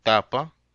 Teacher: for Spanish it is a voiceless Dental stop unaspirated like in tapa